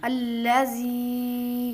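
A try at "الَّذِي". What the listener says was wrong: زی نہیں کریں گے بیٹا، زال کو نرمی سے پڑھیں گے، ری،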